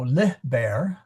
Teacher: I do know that the accent is on the li